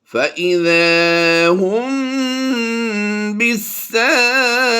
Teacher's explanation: ہم نے یہاں پر اخفاء شفوی کرتے ہوئے غنہ کی آواز دینی ہے